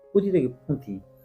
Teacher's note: নাসিক্য ব্যঞ্জন ছাড়া কিছু কিছু ক্ষেত্রে স্বতস্ফুর্তভাবে স্বরধ্বনি সানুনাসিক্য হয় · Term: সতনাসিকী ভবন